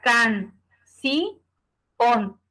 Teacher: una palabra aguda porque su sílaba tónica es la última